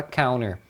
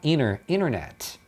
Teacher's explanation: Quando tem NT, é comum que eles tirem o T. Porque a articulação do N e do T é no mesmo lugar, então eles tiram o do T.